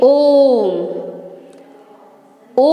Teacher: ओम जो है वह तीन गुना का समय लेता है वह ने में तीन गुना समय लेता है तो यह क्या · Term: प्लुत स्वर